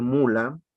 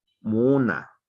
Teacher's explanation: Y por ejemplo, si ellos van a decir mula, ellos no dicen mula, ellos dicen muna, o sea, van a sustituir esta que se llama, igual, esta L por esta N, ¿no? Y además van a ampliar el alargamiento de la primera vocal